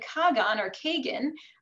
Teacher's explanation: they didn't have the H sound in Russian so they pronounced that as a g